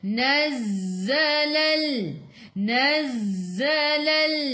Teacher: Kenapa jadi z tu? Sebab sifat huruf zai safir kena bunyikan z, macam bunyi lebah